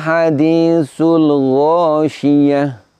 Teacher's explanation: Huruf terakhirnya tak marbutoh, ketika waqaf tak marbutoh kita ganti dengan huruf ha lalu disukun. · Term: ibdal